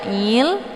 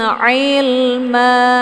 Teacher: jadi Ain ini dia bacaannya lunak a Ilma jangan dibacain Il kalau dibaca Il itu bacaan yang salah karena keluarnya dari jalur hidung sementara posisi yang tepat huruf Ain ini adalah Bagian tenggorokan Tengah